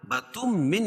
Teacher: تنوین کے بعد ادغام مع الغنہ کے 4 حرفوں میں سے میم آ جائے گی تو یہاں غنہ کر کے پڑھیں گے